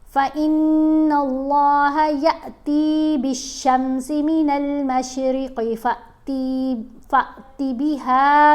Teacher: اب یہاں اس کے اوپر جزم ہے، یہ ساکن ہے، حمزہ ساکن اس کو پڑھیں گے. یا کو جب حمزہ سے ملائیں گے تو آواز کو جھٹکا دے کر پڑھیں گے، فا کو بھی جھٹکا دے کر چھوٹی آواز بنائیں گے، لمبی آواز نہیں بنے گی. اس کو اب حروف مدہ کی طرح نہیں پڑھنا.